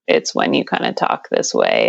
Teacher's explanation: if you're a female and you use vocal fry it's simply a way of configuring the vocal cords inside such that they aren't vibrating very regularly and airflow is a little bit irregular as well · there's a little bit of rasp in the voice it sounds kind of gravelly